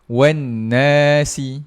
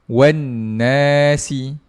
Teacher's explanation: dia dengung satu harakat je